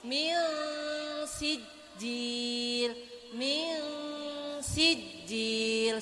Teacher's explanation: Maka kita masukkan suara nun mati kepada huruf sin. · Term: bacaan ikhfa